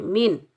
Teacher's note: میم کو ہم نون ساکن کے ساتھ ملائیں گے، یہاں نون کا اظہار ہوگا کیونکہ ہا حروف حلقی میں سے آ رہا ہے تو یہاں نون کا اظہار ہوگا، ہم ظاہر کریں گے، یہاں ہم نون کو ہم ظاہر کریں گے، نہ غنہ کریں گے نہ اخفا کریں گے